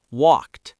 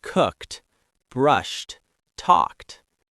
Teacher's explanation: It's 1 syllable. Walked. It ends with a crisp T sound.